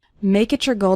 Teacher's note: when we have a word ending in T followed by the word you or your it often sounds like a CH sound